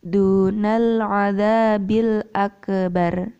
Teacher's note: Akbar itu hanya kafnya hanya berupa nafas yang keluar, bukan berupa pantulan lafaz yang keluar ya.